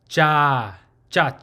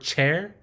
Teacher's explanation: one is called ja ja so the ja the open syllable it's not an aspirated sound so you're not uh breathing a puff of sound of air so it's not like the word chair because the chair has